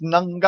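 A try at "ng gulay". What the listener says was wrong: Nagulay. You pronounce it Nagulay. No, there's no. You don't pronounce the G. It's like a na. Nagulay.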